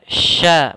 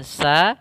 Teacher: makhrajnya itu dari tengah lidah kita dengan langit-langit atas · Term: shin